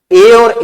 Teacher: ए का उच्चारण होगा कंठ प्लस तालु से